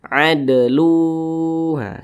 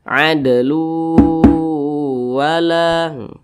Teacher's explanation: cara bacanya itu dimasukkan kemudian juga diengungkan jadi bunyi tanwin dimasukkan ke huruf wa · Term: Idam bunah